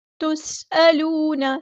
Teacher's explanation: سین کی سیٹی ہم واضح کریں گے، حمزہ کی آواز کو واضح ادا کریں گے. تُسْأَلُونَ ایسے نہیں، تُسْأَلُونَ.